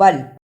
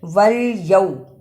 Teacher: واو پر زبر کو لام سے ملانا ہے، اس لیے کہ لام پر جزم ہے، واو زبر لام ول، یا زبر واو یو، یہ بھی حرف لین ہے، اس کو بھی جلدی پڑھنا ہے۔